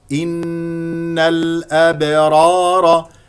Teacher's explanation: نون مشدده فيها غنه بمقدار حركتين